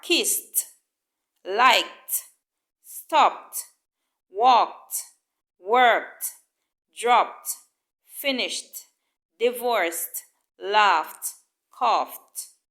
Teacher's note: the T is blended with the previous consonant and not pronounced as an extra syllable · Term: the T sound